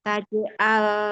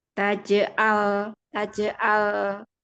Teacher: di lam sukun itu ujung lidahnya itu yang kita fokuskan